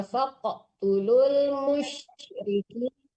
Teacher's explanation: faqtulul dipantulkan juga qafnya ya